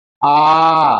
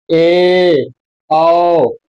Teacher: विवृति पूरा मुह खुलेगा अर्ध विवृति थोड़ा हल्का मुह खुलेगा